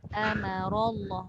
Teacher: Amara tu a nipis, mim ma nipis, ra tu jangan ikut. Amarallah, ra tafkhim.